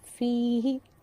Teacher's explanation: جب ہم اس کو پڑھتے ہیں تو ہم فی کو لمبا کرتے ہیں، ہی کو نہیں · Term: یائے مدہ